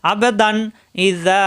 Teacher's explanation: তানবিন তানভীনের পরে হামজা আসছে ইজার হবে স্পষ্ট গুন্না হবে না